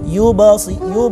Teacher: Adapun pendapat yang ketiga, dan ini ulama mengatakan sampai ada yang mengarang syairnya, wa qalqalatun qarrib ilal fathi mutlaqan, yaitu pendapat yang ketiga, qalqalah tersebut secara mutlak seakan-akan pantulannya itu ada huruf fathahnya